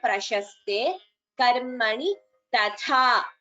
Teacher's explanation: Only the second tha is Mahaprana. The first tha is Alpaprana, so that should be chanted clearly.